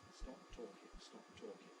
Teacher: there's no separate release burst of the P, and there's no separate onset for the T.